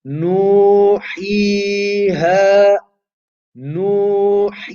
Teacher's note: So the length of nu, he, and ha should be exactly the same.